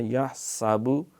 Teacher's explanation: ہا پورے اہتمام سے، سین سیٹی سے، یحسابو۔ اگر وقف کریں گے تو یحساب، کیونکہ وقف جب ہوتا ہے کسی حرف پہ تو اس کو پھر ساکن کر دیتے ہیں، اس پہ زبر ہو، زیر ہو، پیش ہو، دو پیشیں ہوں، دو زیریں ہوں، تو پھر ہم اس کو جزم کر کے پڑھتے ہیں۔